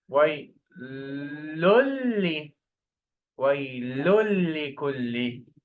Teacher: First, remove the sound of noon. So remove one dhamma and add shadda.